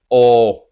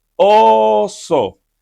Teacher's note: in Spanish, we keep it just open and say O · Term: the Spanish O